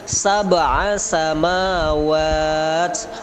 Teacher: Ada qalqalah, sab'a dipantulkan